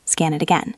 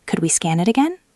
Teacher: It sounds rude, but could we scan it again? With a rising tone, sounds polite.